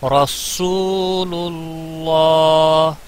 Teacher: یہاں پر سین کا بھی خاص خیال رکھنا ہے، سیٹی کی آواز نکلنی چاہیے. رسول اللہ، صاد کی آواز نہیں نکلنی چاہیے.